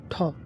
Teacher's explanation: ठ यह क्या है? आप मूर्धन्य महाप्राण अघोष व्यंजन है